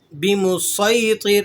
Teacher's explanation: اس کو صاد سے ادا کرنا ہے، سین سے ادا نہیں کرنا ہے